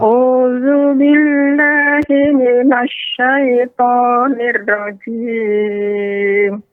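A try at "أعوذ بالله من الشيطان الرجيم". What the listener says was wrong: Ya, Nek, pada ronya, ya, R-nya tidak terdengar jelas sekali. Kan hirro.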